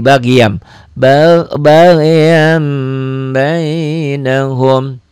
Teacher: jadi iqlab bunyi n-nya berubah menjadi m